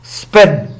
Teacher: the unaspirated p of spen are allophones of the phoneme p।